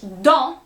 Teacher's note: So that last letter that you would usually pronounce in English, for instance, dent, that T at the end you would pronounce, even if it means something different in French, dent, tooth, you would not pronounce that T at the end